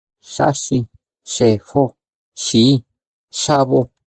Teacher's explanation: La consonante fricativa postalveolar sorda.